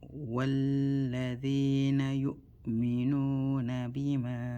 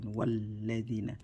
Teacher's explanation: We do hamzatul wasl, so we have a waw, and so we just connect, we join walladina instead of, so don't drag, don't say while, don't drag, don't stretch don't use this alif as a mother. So, disregard the alif, just go from wa to straight to the lam.